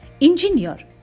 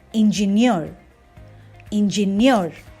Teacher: The second syllable is de-stressed, jiff, and the third syllable is stressed, near.